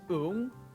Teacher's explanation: the O and U vowels are going to color the NG sound, turning it into something that sounds more like an M